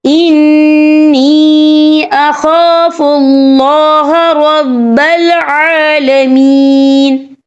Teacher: عین کی آواز نکالنی ہے اور عین کے اوپر کھڑی حرکات ہے، تو ہم یہاں 2 یا 3 عدد کے برابر کھینچیں گے۔